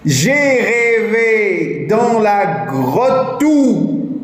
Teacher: Je ne prononce pas le E muet. Le E final, le E caduc, je ne le prononce pas.